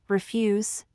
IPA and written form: rɪˈfjuz (Refuse)